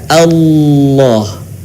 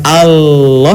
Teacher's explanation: huruf lam harus terdengar suaranya menebal dengan cara menutup kan bagian lisan ke langit-langit